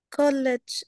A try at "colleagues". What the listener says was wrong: This is E, long E. And this is G.